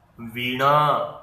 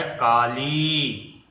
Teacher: तो इसको हमें थोड़ा खींचना पड़ता है दोस्तों क्योंकि ये दीर्घ स्वर है जबकि छोटी ई हृस्व स्वर है।